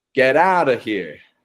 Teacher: The flap T is keeping those T's quick and quiet sounding like D's and using that to connect your words together. In particular, if a word is ending in a T and the next word begins in a vowel sound, that's the clearest flap T.